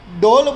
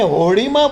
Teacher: ડ તમે જે સ્પષ્ટ ઉચ્ચાર સાથે ભારપૂર્વક બોલો છો, અને હોડીમાં બોલાતો ડ પ્રમાણમાં હળવો છે, ઉચ્ચાર ભાર એટલો નથી ડોલ જેટલો.